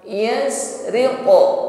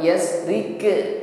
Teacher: bunyi pantulannya di sini tasa'udus saud ya, naik ke langit-langit mulut sehingga suara yang keluar ini tebal. Yasriqu bukan yasrike, bukan rike tetapi riqo. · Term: qalqalah